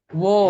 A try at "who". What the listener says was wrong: Who, bukan oh ya.